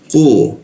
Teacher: posisinya di siku tenggorokan, lidahnya kita lengkungkan sehingga tidak ada hembusan udara ketika membaca qa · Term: huruf qa